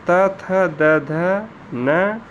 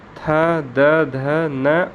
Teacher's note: दंत मतलब कि जिह्वा जो है हमारे दंत से स्पर्श करने के बाद जो वर्ण उच्चरित होते हैं उसी को हम दंत कहते हैं।